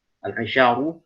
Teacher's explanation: Al-isyaru ro tebal di situ tafkhim karena dhammah.